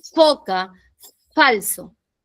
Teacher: vamos a trabajar labio inferior más los dientes superiores para poder articular la la dientes superiores, labio inferior. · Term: labio dental